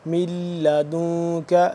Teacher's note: یعنی کہ آواز کو ناک میں لے جا کر تھوڑی دیر کے لیے پڑھنا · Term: اخفا